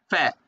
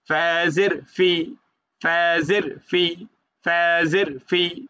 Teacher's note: ফা হচ্ছে উপরের দাঁত, নিচের ঠোঁটের বীজ অংশতে রাখবে, ফ্যা।